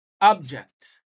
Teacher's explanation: for a noun the stress is on the first syllable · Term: word stress